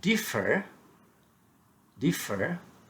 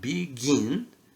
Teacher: The second syllable gets louder and longer emphasis. You just emphasize you emphasize by uh stressing the second syllable louder and longer.